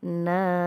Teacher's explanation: na ini Mad Thobi'i panjang dua harakat